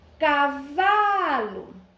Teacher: A sílaba tônica, o vá, paroxítona.